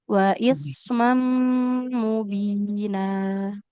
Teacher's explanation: karena huruf sa ini punya sifat mengalir suara maka disempurnakan dulu aliran suaranya.